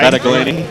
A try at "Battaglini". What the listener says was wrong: No G pronunciation.